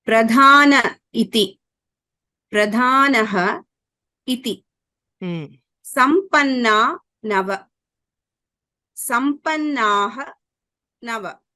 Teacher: So all these are cases where you can see that the visarga has just disappeared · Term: Lopa